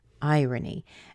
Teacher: the word irony is stressed in the beginning and then it has two week syllables after it irony and